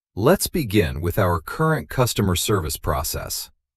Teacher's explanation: Notice that the stress falls on begin, current, customer, and process. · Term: sentence stress